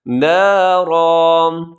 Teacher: نارن تنوین کو وقف کریں گے تو اسے الف کی طرح پڑھا جائے گا